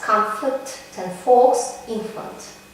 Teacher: The bilabial nasal m or the alveolar nasal n become labiodental under the influence of following labiodental fricatives f, v.